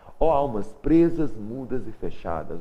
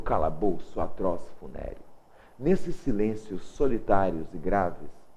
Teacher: dá para ver a repetição dos sons aqui em S, tá? Esse som sibilante, tá? Repete bastante, chama-se aliteração.